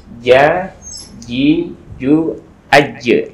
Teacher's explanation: sekali lagi jim itu jangan sampai ada hamsnya ya